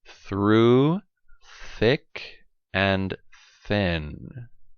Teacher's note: tip of the tongue is between the teeth no vibration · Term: voiceless sound